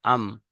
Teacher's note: 15 number মাখরাজ, দুই ঠোঁটের শুকনো অংশ মিলিত হয়ে উচ্চারিত হয় মিম